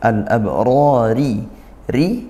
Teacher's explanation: Fathah diikuti alif alabrari ri rnya tarqiq karena dia kasrahnya